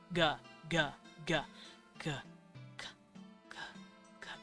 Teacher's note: you cannot say the g sound without making a hum